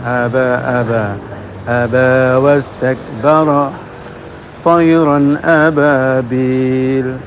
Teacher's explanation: jangan sampai mengucapkan ba itu dengan menggunakan bibir luar, sehingga mingkem kemudian diletuskan